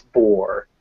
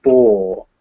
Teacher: in american english we really pronounce our r's at the end of words whereas in british english they normally don't pronounce rs at the end of words